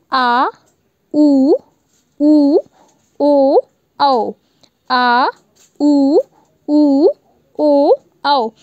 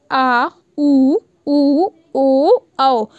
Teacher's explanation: तो आपको जो ज़्यादा प्रेशर देना पड़ा है वो आपके सबसे पीछे वाले, मतलब जीभ के सबसे पीछे वाले भाग पे प्रेशर देना पड़ा है। साथ ही ये जो वर्ड है ये उसी के माध्यम से निकल रहे हैं। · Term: पश्च स्वर